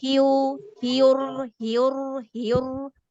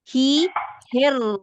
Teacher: ہی کے بعد آپ دیکھیں کہ آپ ڈائریکٹ سیدھا جو ہے مخرج پہ جائیں بغیر ہونٹوں کو گول کیے ہوئے. ہی, ہیر, گڈ, دوبارہ سے ار, ار, بولیں ار, ار, دوبارہ سے ایک منٹ.